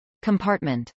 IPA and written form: kəmˈpɑːrtmənt (compartment)